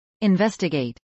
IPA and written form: ˌɪnvˈɛstəɡˌeɪt (investigate)